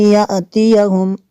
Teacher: حمزہ ساکنہ کو جھٹکا دیں گے